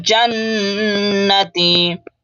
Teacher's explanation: नून के ऊपर तशदीद है, गुन्ना करेंगे